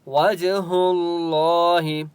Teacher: وجہ جیم کے اوپر قلقلہ ہوگا۔ اللہ کا نام موٹا ہوگا کیونکہ اس سے پہلے ہا کے اوپر پیش ہے، ٹھیک ہے۔